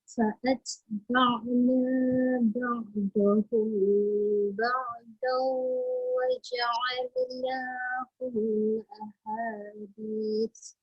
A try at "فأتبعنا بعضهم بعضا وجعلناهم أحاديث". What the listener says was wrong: Waja'alnahum ahadis. Jangan sampai terdengung yang hum tu.